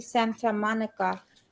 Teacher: you don't pronounce the t